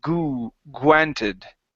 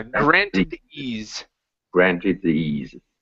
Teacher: when you are pronouncing a gr together the r is changing into a u sound